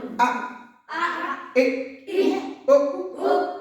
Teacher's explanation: হামজা হলকের শুরু হতে শক্তভাবে আদায় হবে